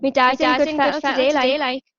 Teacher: Aquí el asunto del artículo posesivo mi, que ellos en lugar de decir my, van a decir mi, como en español